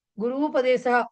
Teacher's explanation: కదా సో పార్వతీ అనే చెప్పుకో అలాగే గురుపదేశః గురు ప్లస్ ఉపదేశః గురుపదేశః ఉ ప్లస్ ఉ ఊ అయింది